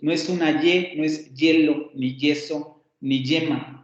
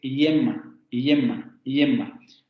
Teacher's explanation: con este fonema aproximante palatal sonoro